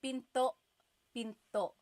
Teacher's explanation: Do you hear the glottal stop when I say pinto?